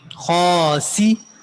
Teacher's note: खा मोटा पढ़ेंगे, एक अलिफ के बराबर खींचेंगे भी, फिर उसके बाद सीन सीटी भी निकालेंगे और जेर को खींचेंगे नहीं